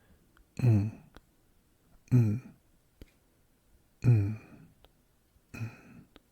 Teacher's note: it's just an N sound with no vowel.